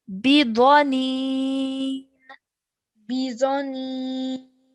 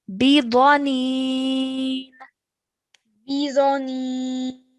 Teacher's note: And this letter Dha is a thick and heavy sound.